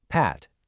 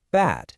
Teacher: The only physical thing that's different is a tiny little vibration in your vocal cords for the B sound.